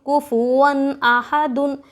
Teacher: نون کی آواز کو ظاہر کر کے بلا غنّے کے جلد پڑھیں گے، حمزہ کے اوپر ہا کے اوپر زبر حرکت تھوڑا بھی نہ کھینچے، دال کے اوپر تنوین، دو زبر دو زیر دو پیش کو تنوین کہتے ہیں۔